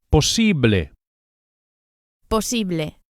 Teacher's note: The second syllable, the e, is accentuated. Posible. And the final e sound, as always in Spanish, is a pure vowel, not a.